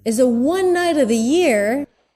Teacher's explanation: One night, stressed, pushed up, one night of the, so he goes down, one night of the year, so he goes a little lower for of the, he's not saying the V sound